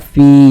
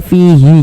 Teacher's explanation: Karena kita berhenti di huruf yang tidak dibaca panjang, hurufnya kita sukunkan, sehingga kita baca fi